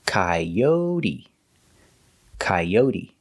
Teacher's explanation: The stress is on the second syllable, coyote, coyote.